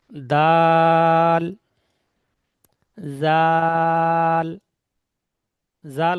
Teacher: জাল বলার সময় জীবের আগা উপরে দাঁতের আগা মিলবে